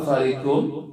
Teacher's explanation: Hukumnya adalah idgham bi gunnah. Fariqum, tanwin bertemu huruf mim, dibaca gunnah dengung.